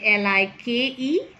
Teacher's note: two articulators come either very close or near but it it the air can still flow out from the sides this is a lateral